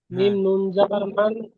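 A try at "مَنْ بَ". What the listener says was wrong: হ্যাঁ এইবারে বলবেন মাম, আর মানটা বলবেন না। কেন বলুন তো? এই কাদাটা এসে যাচ্ছে তো, নুন সাকিনের পরে এই বাটা যখনই আসছে তখনই ওটাই বলছেন, বুঝতে পেরেছেন?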